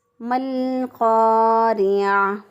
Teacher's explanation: عین کو اسی طرح وسط حلق سے رگڑ کھاتی ہوئی سانس میں ہم نے جو ہے پیچھے زبان کا اینڈ والا حصہ دبا کر رگڑ کھاتی ہوئی آواز میں گلے کے درمیان سے ہم عین نکالیں گے